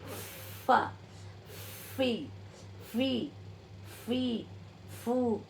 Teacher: दांतों को ओठ के निचले हिस्से पे लाते हैं जब हमें आवाज निकलती है